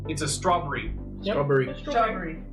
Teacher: I say strawberry with a British accent. They only use 2 syllables instead of 3.